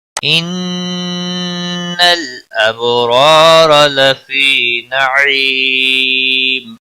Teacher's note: اب با ساکن پر قلقلہ ہوگا، را دونوں را زبر کی وجہ سے پر پڑے جائیں گے. لفی یا مدہ ہے ایک الف کے برابر کھینچ کر پڑھیں گے. · ان نون مشدد پر گننا ہوگا، لام ساکن کو ہلانا نہیں. اب با ساکن پر قلقلہ ہوگا، را دونوں را زبر کی وجہ سے پر پڑے جائیں گے.